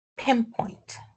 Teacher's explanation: But, still the stress is in the first one, in pin. So, the first P is aspirated, but the second one is not.